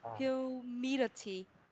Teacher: Cái chữ T của mình mà nằm giữa hai cái nguyên âm là đọc thành chữ đờ